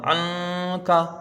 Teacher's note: अनका में यहां पर यहां पर जब ऐन को नून से मिलाएंगे तो नून साकिन के बाद यहां पर काफ है। हुरूफ इफा का काफ आया तो यहां पर एक अलिफ की मिकदार गुना होगा · نون ساکن کے بعد یہاں پر کاف ہے، حروف اخفا کا کاف آیا تو یہاں پر ایک الف کی مقدار غنہ ہوگا، عنکا، ٹھیک ہے۔